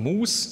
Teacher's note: Im Wort Auslaut, also im Endrand können wir jetzt sagen, gibt es nur das Stimmlose, wie in Mus, sowas wie Mus gibt es nicht.